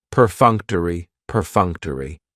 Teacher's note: That third syllable has the schwa, and it's going to end with that long E sound.